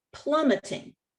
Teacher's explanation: it ends in one consonant it's preceded by one vowel but the accent is not on the final syllable the accent is on the first syllable